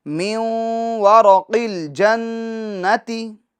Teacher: نون ساکن کا واو میں گنہ بھی ہوگا · جو را ہے اس کو پور پڑھیں گے، موٹا پڑھیں گے، کیونکہ را پر زبر ہے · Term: ادغام مع الگنہ